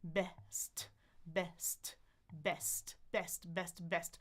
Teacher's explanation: So my tongue is in the front. My jaw is open a little more wide than you're probably used to when you see the letter E because the letter E in most languages is a little bit more closed in the jaw. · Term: Open E